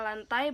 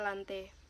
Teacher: Adapun contoh kesalahan pengucapan fonem yaitu terjadi pada fonem AI diucapkan menjadi fonem E